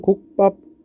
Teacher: 자, 우리 첫 번째 된 소리 대기의 규칙이라고 하면 앞에 있는 받침이 기억과 디귿과 비읍일 때 그 뒤에 있는 애들이 된 소리 된다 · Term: 된 소리 되기